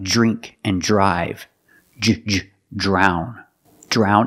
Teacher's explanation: we see the Dr making the J sound like drink and drive